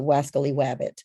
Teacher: And so he substitutes the W sound for rabbit, for the R in rabbit. So that's a substitution of W for R.